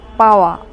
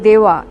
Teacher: পাশাপাশি দুটি স্বরধ্বনি থাকলে একটি থেকে আরেকটি স্বচ্ছন্দে যাওয়ার জন্য মাঝে সেতুর মতো একটি অন্তস্থ ব এর আগম হয়। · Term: ব শ্রুতি